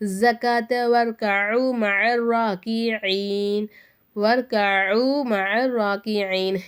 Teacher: சத்து செய்யப்பட்ட எழுத்துக்கு முன்னாடி உள்ள எழுத்துல ஹரக்கத்துகள் இல்லாததுனால இந்த எழுத்துக்கள் நமக்கு உச்சரிப்புல வராது